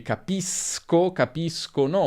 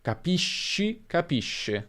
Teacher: E fai anche attenzione alla pronuncia, perché cambia. Se abbiamo o, si pronuncerà sk, quindi capisco, capiscono, ma se abbiamo e o i, abbiamo sh